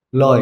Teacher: ये लय है लेकिन उसको लॉय कहा है क्योंकि इसी प्रकार से बंगाली लोग उच्चारण करते हैं, लॉय, क्योंकि ल को लॉय ऐसा बोलते हैं।